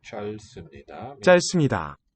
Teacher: It's written L and then a B consonant, but we drop the B.